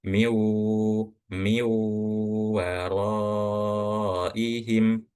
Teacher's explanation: Nah, karena idag bununah maka dibacanya seakan-akan ee langsung ke huruf wau dan dibacanya digunahkan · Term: idgham bighunah, idgham bi gunnah